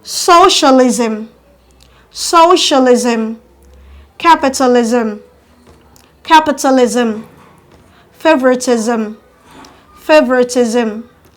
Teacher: are stressed on the first syllable at the beginning